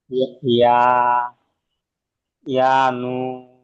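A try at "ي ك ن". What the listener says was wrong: ইয়া নুন পড়ছেন শেষে, আর এই যে কাফটা ছেড়ে দিলেন।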